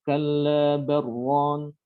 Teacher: Karena lamnya sukun datang setelahnya apa huruf ro dan itu harus diidghamkan sehingga membacanya kalla barron ya.